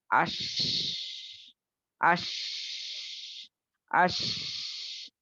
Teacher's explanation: आवाज़ पस्त भी होगी और फिर साँस जारी रहेगी।